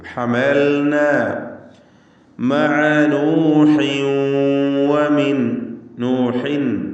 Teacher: തൻവീനിന് ശേഷം വാവ് വന്നതുകൊണ്ട് വാവിലേക്ക് ലയിപ്പിച്ച് മണിക്കണം. ഇത് ഗാംബിഗുന്ന നാഖിസ്.